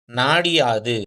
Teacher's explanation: அப்ப என்ன ஆயிடும், நாடியாது. அந்த டீல வந்து பாத்தீங்கன்னா அரை மாத்திரை அளவு தான் அது ஒலிக்கும் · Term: குற்றிய லிகரமும்